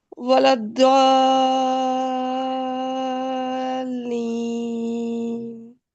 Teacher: اب آپ ولا الضالین کو دوبارہ پڑھیں، اور ضالین جب آپ پڑھیں گی تو ضاد کے بعد جو الف مد ہے اس کو 6 حرکات دیں اپنی انگلیوں پر